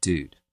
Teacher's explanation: a back vowel, which is ooh, traditionally, starting to come way forward into something like ooh, right?